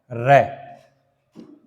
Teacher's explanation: प्रकंपित व्यंजन, प्रकंपित व्यंजन, प्रकंपित व्यंजन एक ही होता है, वो है र